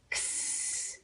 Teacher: It'll have a stop sound and a continuous sound in it.